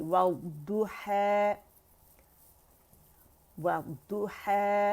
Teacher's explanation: वद्दु व साइड से द्वात की आवाज़, साइड जहाँ पे आपकी ज़बान के मोटे किनारे ऊपर दाढ़ों को लगते हैं, राइट एंड लेफ्ट 5 दाढ़ों को, वहाँ से आपकी आवाज़ निकलेगी।